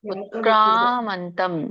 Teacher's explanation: ಕಕ್ಕೆ ಆ ಸ್ವರ ಕೂಡಿದೆ, ಎಳಿಬೇಕು.